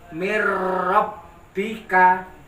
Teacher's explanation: tidak boleh dibaca min rabbika, tapi menyambung ke huruf ro.